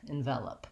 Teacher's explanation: when we have the word envelope, the verb, we have second syllable stress, which means the vel is the long syllable with a clear vowel. That means the E here in envelope has the red tent sound. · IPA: /ɪnˈvɛləp/